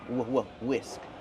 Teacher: the H is silent just use the W sound